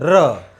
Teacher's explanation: प्राणवायु निकलती है और र बोलते ही जीवा प्रकंपित होती है और वायु लुढ़कने लगती है, इससे हम कहते हैं लुंठित या प्रकंपित।